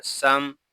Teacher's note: سین میں سیٹی کی آواز آئے گی، میم ساکن میں اظہار شفوی ہوگا